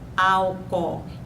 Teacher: Esse processo é muito comum na língua atual, em que uma de duas vogais idênticas é suprimida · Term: crase